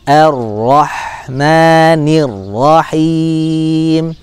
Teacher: di sini ada Idgham Syamsiah bakalan Sakinah nya tidak dibaca ya tidak dibaca lam Sakinah nya langsung masuk ke dalam huruf ro bertasydid